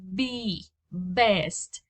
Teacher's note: B is bilabial. That means that you use both of your lips to pronounce it.